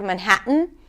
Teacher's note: A lot of times people use the glottal stop instead of the T before an N.